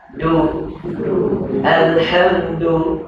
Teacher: Nak sebut du ni, huruf dal ni, lidah pergi ke langit keras sebelah atas hampir dengan gigi hadapan. Sentuh gigi, pangkat gigi pun boleh.